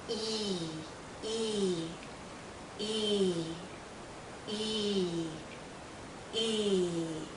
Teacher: e our tongue is generally High our mouth is closed again our lips are pulled and there's a lot of tension in this vowel sound tension means tight you feel it here in your cheeks and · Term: long sound e, long sound E